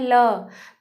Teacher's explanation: पार्श्विक व्यंजन में ये होता है कि जिन व्यंजन के उच्चारण में जो हमारी श्वास वायु होती है वो जीभ के अवरोध के कारण बगल से निकल जाती है